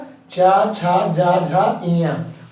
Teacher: आगे इच्चू यसा नाम तालु, इच्चू यसा नाम तालु, इसमें क्या कहेगा, तालु, ई छोटकी बड़की, चा वर्ग में क्या, चा छा जा झा इया, और क्या, या और सा, इन सभी का उच्चारण स्थान क्या होता है, तालु।